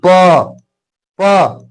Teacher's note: प प प बोलने में ओठ लग रहा है